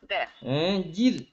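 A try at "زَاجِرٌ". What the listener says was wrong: Jir, tebal kan nipis. Tak nak tebal kan nipis roh mati tu.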